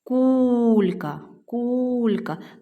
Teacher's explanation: Ми чуємо подовжений перший склад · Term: наголос